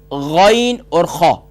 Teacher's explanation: Top of throat یعنی سب سے اوپر والا حصہ جو کوے کی جانب ہے۔ ہمارے گلے کے آخر میں ایک گوشت کا چھوٹا سا لوتھڑا، اس کو کوا کہتے ہیں، یہاں پر اسی کے جانب سے تھوڑا سا پیچھے یہاں سے غین اور خا۔ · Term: ادنا حلق